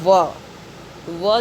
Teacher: इसके बाद है व जो है दंत और ओष्ठ के मेल से व का उच्चारण होता है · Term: दंतोष्ठ